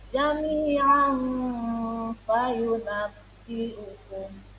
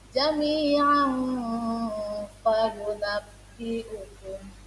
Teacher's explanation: berarti cara bacanya samar-samar, berarti langsung memasukkan bunyi huruf fa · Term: ikhfa